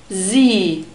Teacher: Sie also contains this IE diphthong, which is a long E sound, so we have the letter I and the double point in the script, so the double point makes vowels long. We also have a soft S sound here, that's why we use the Z in the phonetic script